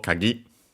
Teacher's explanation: Accented, by the way, on the last syllable